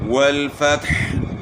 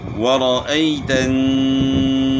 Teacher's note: واو کو ادا کریں گے تو واو میں ہونٹ گول ہوں گے، اور والفتح یا حا کے اوپر آپ جو ہے وقف کریں گے تو حا جو ہے ساکن ہو جائے گی، اور اس کو گلے کے درمیان سے ادا کرنا ہے.